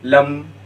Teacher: لم میں دیکھیے دونوں ہونٹ کیا ہو جا رہے ہیں؟ مل جا رہے ہیں، لم، اسی وجہ سے اس کو کہا جاتا ہے اظہار شفوی، دونوں ہونٹ مل جا رہے ہیں۔